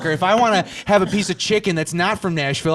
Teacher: all the vowels are shorter they're cut down it sounds more Stern